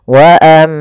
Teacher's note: ketika huruf mim berharakat tasdid maka dibaca dengan bacaan gunah cara membacanya suara mnya ditahan dua harakat